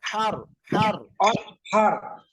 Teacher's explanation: গলাটা চেপে উচ্চারণ হবে, হার হার হার